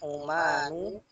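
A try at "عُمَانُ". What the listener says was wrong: Jadi ada tasdid seharusnya di sini. Ummanu.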